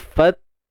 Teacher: Kita tahan suara dulu. Fat. Lepas tu baru ada udara yang mengalir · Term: hams